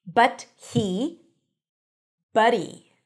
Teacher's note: The T becomes a flap T, the H drops, buddy.